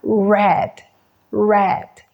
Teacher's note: cuando el sonido de la r está iniciando en una palabra por alguna razón los labios hacen un pequeñísimo círculo